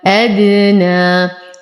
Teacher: وقلقل الدال فهو من حروف قطب جد حال سكونها. لدينا ألف ساكنة ما قبلها مفتوح، فهو من الطبيعي حركتين.